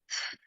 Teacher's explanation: I place my tongue in between my upper teeth and my lower teeth and then I blow air I blow out air so I go this way let's try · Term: th sound